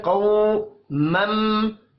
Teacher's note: ذرا را کو موٹا پڑھیں گے، قوف کو بھی موٹا پڑھنا ہے، واو لین ہے، قو مم میم مشدد پر غنہ ہوگا